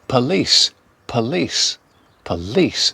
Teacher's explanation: Stress on the second syllable, police. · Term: weak O